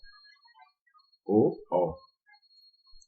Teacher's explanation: इनमें कंठ और ओठ दोनों का उपयोग होते हैं, तो इनको कंठोष्ठ वर्ण भी कहा जाता है।